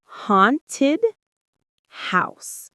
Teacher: The stress is on haunted and also on house.